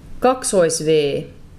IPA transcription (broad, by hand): kaksois.veː